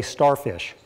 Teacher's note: And the puff of air is missing · the S before the T causes the aspiration to become unaspirated and causes the vocal cords to vibrate.